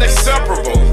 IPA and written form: inˈsep(ə)rəb(ə)l (Inseparable)